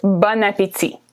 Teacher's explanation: when you put them together there's a liaison between the last consonant and the first vowel that's a long explanation for this expression but it's pronounced Bon